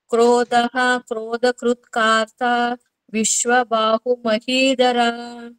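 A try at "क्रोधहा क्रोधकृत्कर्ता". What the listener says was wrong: ಕೃತ್ಕಾರ್ತ ಅಲ್ಲ, ಕೃತ್ಕರ್ತ. ಚಿಕ್ಕ ಕಾದು, ದೀರ್ಘ ಇಲ್ಲ. ಇದಿಲ್ಲ, ಹ್ರಸ್ವ, ಅದು ದೀರ್ಘ ಇಲ್ಲ.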